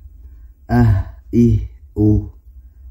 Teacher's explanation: Huruf ha ini memiliki sifat hams atau samar, yang kedua lunak atau rakawah